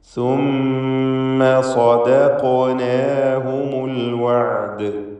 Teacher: ആയിന് ഹൽഖിയായ അക്ഷരമാണ്, ശ്രദ്ധിക്കണം. തൊണ്ടയുടെ മധ്യമാണല്ലോ അതിൻ്റെ മഖ്റജ്.